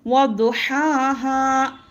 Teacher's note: حرکات کو جلد پڑھیں گے اور کھڑا زبر کو ایک الف کے برابر کھینچ کر پڑھیں گے. آیت ہے الف مدہ پر جیسا ہے ویسے ہی وقف کریں گے.